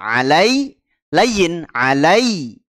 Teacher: Ya Sukun sebelumnya fathah layin kita lembutkan bacaannya